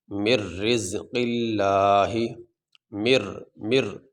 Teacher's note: اب یہاں پہ یہ نون نہیں پڑھا جائے گا، اس نون کو ظاہر کرنے کے لیے اس را کے اوپر یہ تشدید آ گئی ہے۔ اب یہاں پہ ہم اس میم کو را کے ساتھ ملا کے پڑھیں گے، نون بیچ میں نہیں پڑھا جائے گا۔